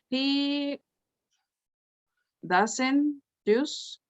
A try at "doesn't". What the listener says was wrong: And try to pronounce the T at the end. Doesn't.